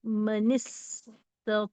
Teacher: اس کی تفصیلات یہ ہیں کہ یہاں لکھا ہے من، قرآن مجید میں من، پھر سین کے اوپر جزم تطوع اس طرح لکھا ہے، لیکن جب ہم پڑھتے ہیں تو من کے نون ساکن کو زیر دے کر منستطاع اس طرح پڑھتے ہیں